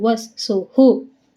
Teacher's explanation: ಸು ಮುಂದೆ ವಿಸರ್ಗ ಇದೆ, ಅದಕ್ಕೆ ಹು